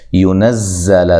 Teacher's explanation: زا کو زور سے ادا کرنا ہے، سختی سے ادا کرنا ہے، اور زا جو ہے سیٹی کے ساتھ اس کو ادا کرنا ہے